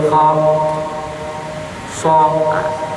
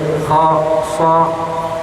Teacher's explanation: sebagian besar dari pangkal lidah terangkat ke langit-langit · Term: istilla